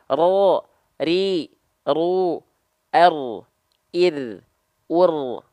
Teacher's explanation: dia bergetar tapi tidak terlampau berlebihan · Tetap ada getarannya sedikit tapi tetap tegas lugas jelas. Jangan sampai hilang getarannya. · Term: huruf ro